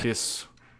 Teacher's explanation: And maybe I don't even hear the u at the end. Maybe it's kind of, maybe that vowel gets eaten a little bit.